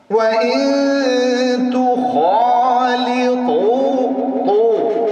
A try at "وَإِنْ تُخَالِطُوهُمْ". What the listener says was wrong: not tu. Please don't say tu. not tu. Ta and ta, same place is makhraj, is coming from same. But ta, full mouth. Ta, ta.